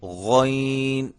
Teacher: غین اس کو یہ آواز نہیں آنی چاہیے. غین یہ بھی حلق سے ادا ہوتا ہے, حلق کے اس حصے سے جو منہ کے قریب ہے وہاں سے یہ ادا ہوتا ہے. یہ اور یہ دونوں ایک ہی جگہ سے ادا ہوتے ہیں, غین اور خو.